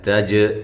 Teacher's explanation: تا کو باریک جیم پہ قلقلہ